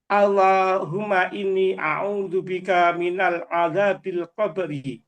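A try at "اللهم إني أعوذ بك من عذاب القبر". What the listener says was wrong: Min azabil qabr. Ya, jadi bukan minal azabi, tapi min azabil qabri.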